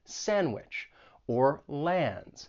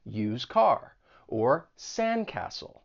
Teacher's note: You may not pronounce the D when it comes between two consonants. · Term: elision